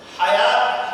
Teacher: حلق کے بیچ سے ہا ادا ہوتا ہے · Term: بڑی ہا